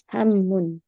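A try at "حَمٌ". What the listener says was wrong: Gak pakai tasdid, Ibu. Hamun biasa aja. Cepet ya, hamun. Bukan hamun. Gak ada ininya.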